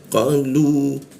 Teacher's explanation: Huruf qo di sikut tenggorokan lidahnya kita naikkan sehingga tidak ada urusan udara ketika membaca qo lu masuk ke lu di bawah hidung posisinya ada wau maka lunya itu panjang ya dua harakat